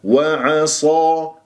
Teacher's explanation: الصاد مفخمة مرتبة ثانية مفتوحة وهي من أحرف الصفير، أقوى أحرف الصفير